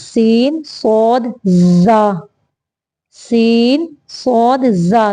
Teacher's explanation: हैं आगे देखि रूफे सफीर इनको सफीर इसलिए कहते हैं क्योंकि इनके अंदर सीटी की आवाज होती है · ان کو صفیریہ اس لیے کہتے ہیں کیونکہ ان کے اندر سیٹی کی آواز ہوتی ہے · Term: حروف صفیریہ